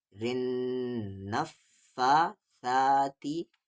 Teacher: وَمِن شَرٍ، را کو نون میں رن، نون کو فا میں نف، اور یہاں پر نون پہ تشدید ہے، غنہ ہوگا